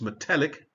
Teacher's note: it does actually change the stress to the second syllable there. So it's metallic.